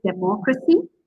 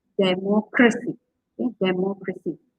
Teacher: Okay, you stress the third from last syllable.